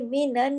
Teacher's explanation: نون پہ تشدید کی وجہ سے غنہ ہو رہا ہے